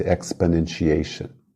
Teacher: Você quase nem pronuncia a vogal exponentiation o quase desaparece